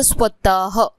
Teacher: विसर्ग याचा अर्थ श्वास सोडणे असा होतो. विसर्गाचा उच्चार होत असताना स्वराच्या उच्चारानंतर ह, हा, ही, ही, हु, हु सारखा उच्चार होताना हवेचे किंचित विसर्जन होते